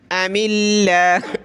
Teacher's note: میم پہ زیر، تو پتلا کریں گے